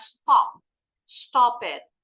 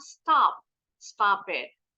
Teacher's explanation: kayak orang Inggris, O-nya lebih bulat. Kalau orang Amerika, bunyi huruf vokal itu lebih lebar.